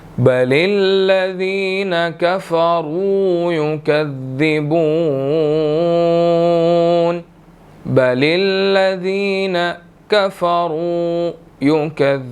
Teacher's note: را موٹی ادا کی جائے گی اور اس کے بعد واو مدہ ہے 1 سیکنڈ اس کو لمبا کریں گے